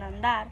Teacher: donde la N se dentaliza ante la consonante D, pero al mismo tiempo la D se realiza oclusiva por influencia nasal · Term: recíproca